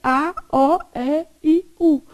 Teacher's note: começa com a boquinha mais aberta, é a vogal mais aberta. E vai fechando. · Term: escala de timbre